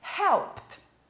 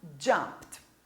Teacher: A gente já vai tirando o e já joga direto para T. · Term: som de T